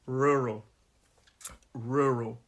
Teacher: it's a two-syllable word this word and the stress is on that first syllable